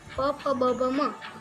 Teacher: और फिर जैसे कि प फ ब भ म, उसको ओट से कहते हैं, क्योंकि उसका उच्चारण करते समय हमारे होठ दोनों एक दूसरे को छूते हैं और तभी उसका उच्चारण होता है।